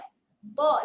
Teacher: jaga makhraj huruf dha tepi lidah pergi ke rahang atas. Jadi kita bunyikan bunyi huruf dha di situ Dha, sengit sikit mulut.